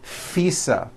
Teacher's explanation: I said FISA with an unvoiced F I should have said visa with a voiced V living I